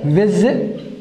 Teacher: So you can see that stress is not on the last syllable